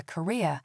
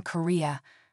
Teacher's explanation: Career is two syllables, with a diphthong in the second one. Korea is three syllables, none of which contain a diphthong.